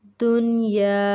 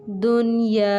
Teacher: نون ساکن کے بعد یا اسی کے ساتھ لکھا ہوا ہے، یعنی ایک ہی کلمے میں دونوں لفظ لکھے ہوئے ہیں، تو یہاں پر اظہار مطلق ہوگا، یعنی کہ ہم غنہ نہیں کریں گے